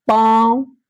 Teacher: वह नून है जो साफ-साफ ना पढ़े जाए है ना जिसकी आवाज नाक से निकले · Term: नूने गुना